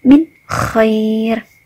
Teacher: Dibaca idhar atau jelas karena ada nun sukun bertemu dengan kha.